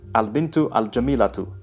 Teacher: the Arabic equivalent of h at the end of the word changes to a t sound before the case ending